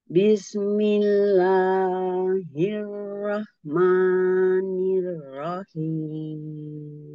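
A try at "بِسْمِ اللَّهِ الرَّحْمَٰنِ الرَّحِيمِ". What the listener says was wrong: Ada basmalah sinnya, jangan memantul. Bismillah. Ya, ditahan pada makhrajnya sin. Bismillah, ada sifat sofit. Bismillahirrahmanirrahim.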